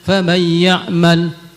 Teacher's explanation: yang seharusnya terbaca idgham tapi tidak diidgamkan